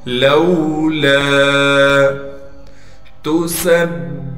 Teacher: سین کو با سے ملا دیں گے اس لیے کہ با پر تشدید ہے، تشدید ہونے کی وجہ سے تھوڑا ٹھہراؤ کریں گے